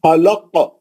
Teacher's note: पहला खा जो है ऊपर ही हलक का है खुरदुरा आवाज है भारी आवाज है · پہلا خا جو ہے اوپری حلق کا ہے، کھردرا آواز ہے، بھاری آواز ہے